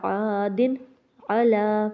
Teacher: تیسرے نمبر پر ہم نے عین پڑھا ہے تو عین کی وجہ سے یہاں پر ہم نے غنہ نہیں کرنا